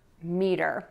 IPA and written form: midər (METER)